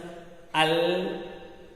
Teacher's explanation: کنارہ زبان مسورے سامنے والے مسورے سے مل کر لام ادا ہوتا ہے